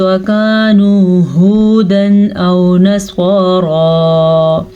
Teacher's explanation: تنوین کے بعد حمزہ حروف حلقی میں سے آیا ہے تو ہم تنوین کو ظاہر کر کے پڑھیں گے، بغیر غننے کے پڑھیں گے